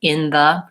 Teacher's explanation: I'm linking between the N and the th and it becomes more of one sound in the in the but it's typically always there if it